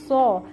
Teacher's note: بالکل سین کی طرح سو ہوتا ہے لیکن آواز کو منہ میں جمع کیا جاتا ہے